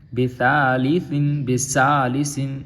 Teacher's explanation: سین میں نہیں لے کے جائیں گے، سا پڑھیں گے